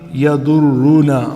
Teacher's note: دود کو بھی موٹا پڑھنا ہے اور را کو بھی آپ نے فل ماؤتھ پڑھنا ہے